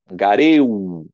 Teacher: Dois gamas aqui, o gama duplicado, geminado. Então, o primeiro fica nasalizado. Angareu. Olha aqui um ditongo, gareu.